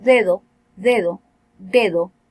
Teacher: por estar al lado de dos vocales no hay no puede ocurrir un cierre completo y entonces se se le llama aplicativa o aproximando este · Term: fricativa o aproximante